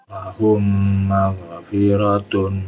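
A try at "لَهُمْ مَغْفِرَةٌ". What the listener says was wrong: Agak lama dikit. Lahum maghfiratun.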